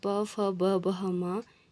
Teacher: ओष्ठ यानी हमारी जो लिप्स होती है, इनके उच्चारण करते समय हमारी जो लिप्स होती है वो एक दूसरे से टच होते हैं